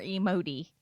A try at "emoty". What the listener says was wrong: More emoty. So like it almost sounds like you're saying that you're emo-y. You gotta make sure you put the T in there very prominently.